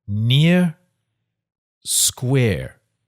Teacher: there is a marked difference between the vowel sounds in the word near and square the vowel sounds are the same in New Zealand English